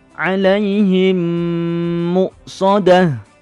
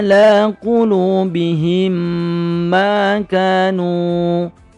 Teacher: sukun ketemu meme-meme pertama ini memang kedua Bagaimana cara membacanya yaitu Meme sukun dimasukkan atau digabungkan dengan Meme di depannya · mim sukun dimasukkan atau digabungkan dengan mim di depannya dan berdengung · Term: Idgham Mimi, idgham mimi